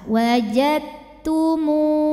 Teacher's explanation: Artinya huruf dal sama sekali sifat-sifatnya sudah tidak terlihat, masuk dengan sempurna. Idgham mutajanisain yang kamil.